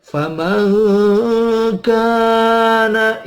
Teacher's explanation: ada nun mati ketemu kaf, ya dibaca ikhfa ma'al gunnah. Faman kana, ya ikhfa dengung, abad bahkan jauh, hampir seperti ang.